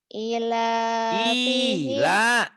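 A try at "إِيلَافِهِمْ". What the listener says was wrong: I-nya panjang, la-nya panjang.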